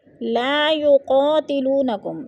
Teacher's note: الف خالی سے پہلے لام کے اوپر زبر ہے تو الف مدہ کو ایک الف دو حرکات کے برابر لمبا کر کے پڑھیں گے